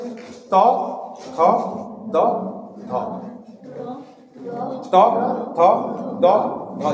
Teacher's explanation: দাঁতে ঠেকছে, খুব বেশি উঠতে হচ্ছে না। তাহলে যখন দাঁতে ঠেকছে তখন আমরা উচ্চারণ করছি ত থ দ ধ।